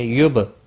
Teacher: با ساکن پر قلقلہ ہوگا